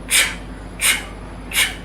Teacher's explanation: when it comes to the CH, what we do is we add a T sound to the SH, so it sounds like ch.